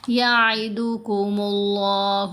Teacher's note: لفظ اللہ کی لام کو موٹا پڑھیں گے · یعید آئین کی آواز کو گلے سے ادا کیا جائے گا